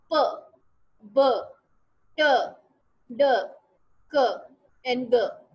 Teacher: तो ऐसी साउंड्स को स्टॉप्स, ऐसे जो मैनर ऑफ आर्टिकुलेशन है इसको हम कहते हैं कि ये स्टॉप है। तो they are produced by some form of stopping of the air stream then letting it गो abruptly, और फिर आहिस्ता आहिस्ता आवाज फिर बाहर निकलती है।